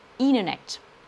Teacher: en anglais américain, lorsque vous avez un N suivi d'un T, le T disparaît au profit du N. Donc, Internet va donner Internet.